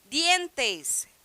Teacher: Dientes é totalmente linguodental, tá? A língua fica entre os dentes.